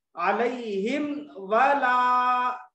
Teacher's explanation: मीम का वाव में इदगाम नहीं करेंगे बल्कि दोनों को अलग अलग पढ़ेंगे